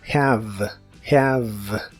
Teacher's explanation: La H se pronuncia como una J suave y la E del final es muda, lo cual es muy común en inglés. La palabra termina con el sonido de la V, que es labiodental y vibrante en inglés, y la haces como mordiendo ligeramente tu labio.